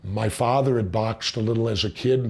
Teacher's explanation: With Jesse Ventura when he said father, the ah sound was very long.